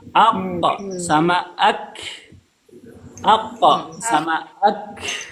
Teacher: qf dan Kaf sama-sama dari keluarnya dari lisan tetapi berdekatan makhrajnya tidak persis sama Q Bawah e di atasnya lagi sedikit Kaf Makanya beda bunyinya